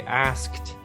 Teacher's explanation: you really have to roll that sk into a T sound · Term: SKT sound